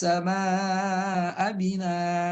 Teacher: Ada hamzah fathaten kemudian kita sukunkan, harus dibaca a tanpa panjang